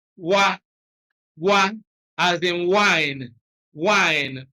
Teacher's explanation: Bilabial approximant, you bring your lips together and then open them, and that is what you have as W, or wa, wa, as in wine, wine, or the initial sound of Y.